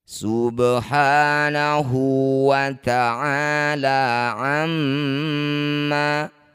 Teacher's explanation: ba sukun di tengah bacaan disebut bacaan qalqalah sugro. Qalqalah artinya memantul, sugro artinya kecil. Pantulkan huruf ba kecil saja pantulannya.